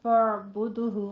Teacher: فعبد میں آپ نے وسط حلق سے عین کی آواز ادا کرنی ہے اور دال پہ قلقلہ کرنا ہے